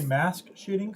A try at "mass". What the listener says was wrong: Mass shootings. MASS, not mask shootings, mass.